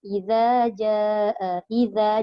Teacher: Jadi pastikan zal ni pun mesti keluar hujung lidah. Tak keluar nanti dia jadi zai. Okey, iza, jaa, iza, jangan iza, nanti dia jadi zai.